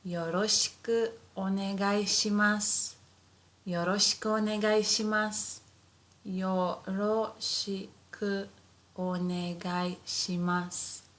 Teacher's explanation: so as if the u disappears